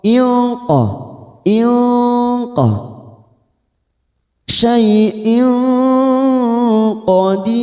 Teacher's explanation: namanya ikhfa hakiki. Kita samarkan bunyi tanwin 3 harokat.